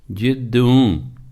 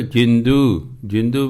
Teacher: ਦੱਦੇ ਦੀ ਟਿੱਪੀ ਬੋਲਣੀ ਹੈ, ਕਹਿ ਰਹੇ ਜੱਜੇ ਦੀ ਨਹੀਂ ਬੋਲਦੇ